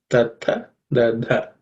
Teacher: So dha is the fourth sound in the third class of letters. It has to be aspirated